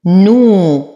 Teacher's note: لدينا واو ساكنة ما قبلها مضموم فهو مد طبيعي حركتين. هذه الألف للتفرقة لا تنطق ولا أراها.